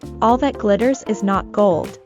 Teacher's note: In the American accent, the double T in the word is pronounced as the fast D sound, as they are between two vowels, I and E.